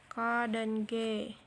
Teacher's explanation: dorsovelar bunyi yang dihasilkan oleh punggung lidah dorsum dan langit-langit lunak vellum